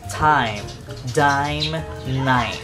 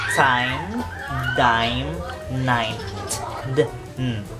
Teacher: So, pareha lang ang placement sa ato ang dila, no? Nasa atop, sa roof ba, sa atong kuan, atong baba.